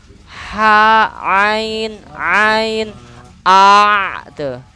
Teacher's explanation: Ketika kita bunyi gini nih, apa mengucapkan kata ha biasa, tekan aja dikit, bakal bunyi ha. Jadi yang menggerakkan bunyi ha dan ain itu tenggorokan tengah. · Ha itu sama ain satu makhraj dari wasul halki tengah tenggorokan.